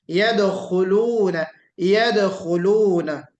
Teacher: اور یدخلون آپ تھوڑا سا خا کو کوشش کیجئے کہ اپنے صحیح مخرج سے اور پر نکلے، یعنی اس میں استعلا کی جو صفت ہے اس کے ساتھ نکلے